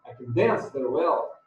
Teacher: Então, no stressed. Can não é acentuado, digamos assim.